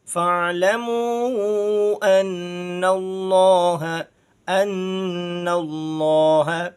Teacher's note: لفظ اللہ کو پر پڑھنا ہے، موٹا کر کے پڑھنا ہے، کیونکہ اس سے پہلے حرف یعنی نون پر زبر ہے۔ جب لفظ اللہ کے لام سے پہلے حرف پر زبر یا پیش آ جائے اس وقت لفظ اللہ کو پر پڑھتے ہیں، موٹا کر کے پڑھتے ہیں۔